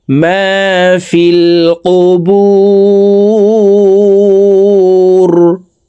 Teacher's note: তিন আলিফ টেনে রকে সাকিন করতে হবে কারণ মধ্যে আরজি তিন আলিফ টেনিয়া পড়িতে হয়